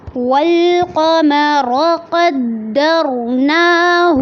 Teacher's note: والقمر میں لام پہ آواز کو چلانا ہے، قاف میں آواز کو پر کرنا ہے، را کو بھی پر کرنا ہے